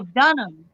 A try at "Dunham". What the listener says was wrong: You say Dunham, I say Dunham. No, the H is silent. It's Dunham.